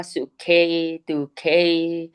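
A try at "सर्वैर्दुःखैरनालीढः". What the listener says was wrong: ये तो आपने संधि सही करी, पर ये सुखई है कि सर्वई है? सर्व, सर्वैर दुःखैरनालीडः।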